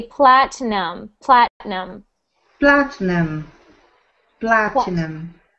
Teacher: So we pronounce that word with no I sound. We ignore the I.